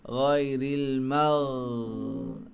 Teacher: Ghain ni sifat dia tertahan angin, suara terlepas. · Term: rakhawah